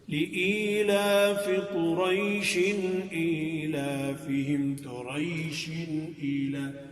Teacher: اگر ہم قریش پر وقف نہیں کرتے لِإِيلَافِ قُرَيْشٍ إِيلَافِهِمْ قُرَيْشٍ إِيلَا تو یہ مد ختم ہو جائے گی. مد عارض لین ہے یہ ختم ہو جائے گی اور آگے ملا کے پڑھ دیں گے.